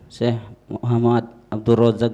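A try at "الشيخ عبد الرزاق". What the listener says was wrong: Syekh Abdul Razak. Muhammadnya tidak ada.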